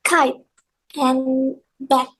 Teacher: we block airflow with the back of the tongue against the soft palate or velar.